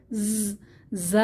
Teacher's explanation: দুই দাঁতের পেট ও আগার সঙ্গে লাগিয়ে অর্থাৎ দাঁতের মাঝামাঝি অবস্থানে জিহবার আগাটা নিচের পাটির দাঁতের মাঝামাঝি অবস্থানে ভাইব্রেশন সাউন্ড আকারে যা উচ্চারিত হবে